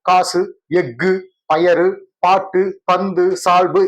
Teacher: ஒரு மாத்திரைக்கு பதிலா அரை மாத்திரை அளவுக்கு ஒளிக்குது. இல்லைங்களா சரி இப்படியாக தனக்குரிய ஓசையில் குறைஞ்ு ஒளிக்கிற உகரம் குற்றியல் உகரம் அப்படின்னு சொல்லப்படுது.